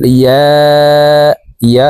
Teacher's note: ইয়া এখানে তিন আলিফ টান